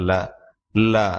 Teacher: நாவின் இரு பக்கங்கள் தடித்து பற்களின் அடியை தொடுவதால் லகரம் தோன்றுகிற